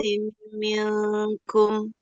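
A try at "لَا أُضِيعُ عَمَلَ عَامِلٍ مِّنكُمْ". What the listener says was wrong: Mainnya jangan dipanjangkan.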